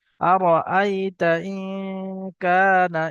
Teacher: নুন সাকিনের আওয়াজকে নাকে তুলে একালি পরিমাণ গুণনা করে পড়তে হবে। আরাআইতা ইন কানা, এটা আলিফ মাদ্দা এক আলিফ টান হবে।